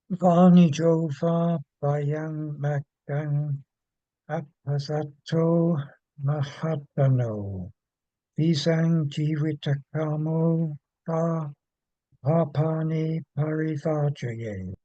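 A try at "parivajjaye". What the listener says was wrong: Ah, almost perfect, but parivajaye. A short A and a double J. Parivajaye. But remember, never be shy about holding the double consonant. Parivajaye. Vajaye.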